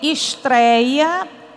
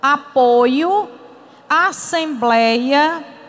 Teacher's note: todas são paroxítonas a sílaba forte é a penúltima e dentro dela eu encontro os ditongos Oi e Ei eu